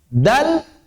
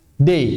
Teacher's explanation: Tapi kalau bahasa Arab, ujung lidah ketemu dengan pangkal gigi seri.